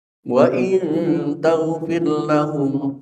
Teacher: jangan sampai mengkolkolahkan huruf ghin sehingga terdengar bacaan taghfir lahu, tidak, karena ghin bukanlah huruf qalqalah. Bacalah tanpa pantulan qalqalah.